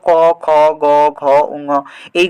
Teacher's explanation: কণ্ঠ থেকে সরাসরি উচ্চারিত হয় তাকে আমরা কণ্ঠধ্বনি বলতে পারি